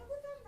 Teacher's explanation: जीभ पहले उठकर मूर्धा को स्पर्श करती है और फिर झटके के साथ नीचे आती है। देखिए इसको उच्चारण करें, ढ, पहले जो जीभ इस जब वर्ण को हम उच्चारण कर रहे हैं तो जीभ क्या रही है, उठ रही है, झट से नहीं उसकी मूर्धा स्पर्श कर रही है, झट से नहीं नीचे गिर रही है।